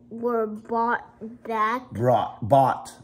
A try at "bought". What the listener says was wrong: Brought. There's no R, so bought.